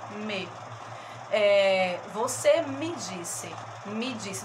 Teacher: Me é uma sílaba, é uma palavra de uma sílaba só, mas que ela tem um som mais fraquinho, então ela é uma sílaba átona, né? Ma tem um som forte, até acentuada, inclusive.